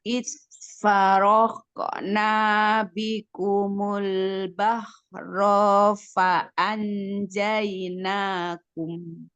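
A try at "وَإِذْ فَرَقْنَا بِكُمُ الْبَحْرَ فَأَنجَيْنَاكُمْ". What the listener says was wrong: Tapi di sini udah mulai tuh bikumunya bibirnya balik lagi jadi bikumul itu antara u sama e. Harus monyong ya, monyongnya nggak monyong-monyong nih. kerasa nggak sih nggak monyongnya?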